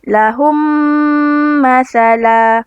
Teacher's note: idgham mislan syafawi dibaca dengan merapatkan kedua bibir berserta dengung